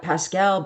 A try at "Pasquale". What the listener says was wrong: Oh, Pasquale. Pasquale. He's pronouncing it the French.